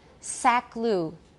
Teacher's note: The lip rounding for the u may start in the k, which is separated by two segments and a word boundary